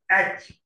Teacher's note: glottal is produced at the vocal cord. I told you that vocal cord also can act as articulator.